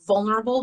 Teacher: when we say vulnerable, the stress falls on the first syllable